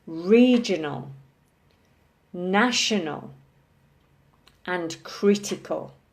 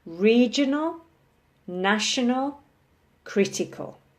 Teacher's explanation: blue circle at the start followed by two small circles so these are words with three syllables with the emphasis on the first syllable